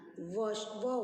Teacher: दंतोष्ठौ दंत एवं ओष्ठ से उच्चारण व वर्ण का होता है, इसे दंतोष्ठयः कहते हैं।